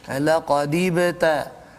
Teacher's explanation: Jadi kalau kita perhati situ, huruf ba itu sukun di tengah kalimah ketika wasal, maka dibaca dengan qalqalah surah.